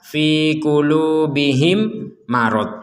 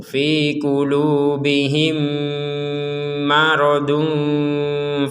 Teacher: mim yang pertama dimasukkan kepada mim yang kedua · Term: dengung